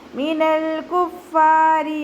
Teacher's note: 2 count നീട്ടിക്കൊടുക്കുക. റോ കെസ്റ ആയതുകൊണ്ട് താഴ്ത്തി ഉച്ചരിച്ച് കൊടുക്കുക